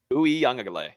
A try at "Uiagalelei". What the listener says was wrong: you said the G twice. Uiagalelei.